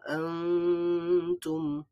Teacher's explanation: আনতুম এখানে আং বলবো, আমরা গুন্নাহ করব,